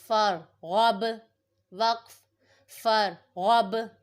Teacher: یہاں پہ با پہ قلقلہ ہو رہا ہے، با ساکن پہ، اس لیے ہم نے اس کو جماؤں کے ساتھ پڑھا ہے۔